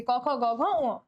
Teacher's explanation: ওকে, জিহ্বার যে পিছনের অংশটা সেটা হচ্ছে, দেখো ক বলার সময় জিহ্বার পেছনের অংশটা আমাদের নরম তালুর সঙ্গে কিন্তু এসে লেগে যাইতেছে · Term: কণ্ঠধ্বনি